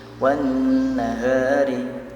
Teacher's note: alif lam bertemu huruf nun, maka langsung dimasukkan saja bacaannya · Itu nun agak ditahan karena nun termasuk huruf gunnah. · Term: alif lam syamsiyah